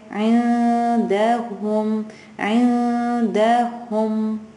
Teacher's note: Sakin. The noon is not touching anywhere in my mouth. It's an open space. It's just like hanging there. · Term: ikhfa